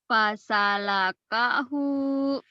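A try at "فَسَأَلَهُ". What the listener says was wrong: Iya, banyak kemajuan ya.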